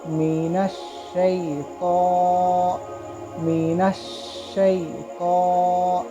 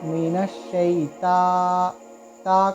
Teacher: اگر آپ اس کو مینش شی تا، تا کہیں گے غلط ہو جائے گا، سو مینش شی تو، اس طریقے سے پر پڑھنا ہوگا۔ تو حروف مستعالیہ میں سے ہے، اس کو ہم پر پڑھیں گے۔